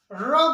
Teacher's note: अब र जो है, र बोलोगे तो हमारे जो जीभ है पीछे की ओर जाता है, इसीलिए हो जाता है र मूर्धन्य, मूर्धन्य हो जाता है।